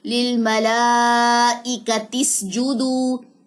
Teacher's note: تو یہاں پہ دوران کلام تو حمزہ وصلی جو ہے وہ حذف ہو گیا نا، وہ تو اب پڑھا ہی نہیں جا رہا